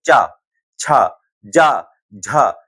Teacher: जो जिह्वा है वो कहां पर हमारी टकरा रही है? जा करके तालु पर